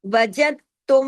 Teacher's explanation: تشدید والا میم ہے تو یہاں غنہ ہوگا، ڈبل میم کی وجہ سے بڑا غنہ ہوگا، اکمل، آواز دیر تک ناک میں چھپے گی